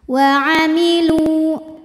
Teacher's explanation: adalah Mad thiiri sebab wau ini adalah W Mad wau sukun wau sukun yang didahului damah maka panjang lamnya dua harakat